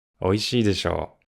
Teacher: we sometimes say it with a falling intonation too